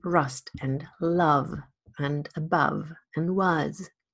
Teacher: this more open central vowel that occurs in rust and love and above and was